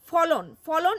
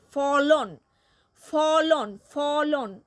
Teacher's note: সময় দেখা যায় না সেগুলি হচ্ছে নিহত স্বরধ্বনি যেমন ফলন ফলন এই শব্দটিতে ফ উচ্চারণ করার সময় অ নিহিত আছে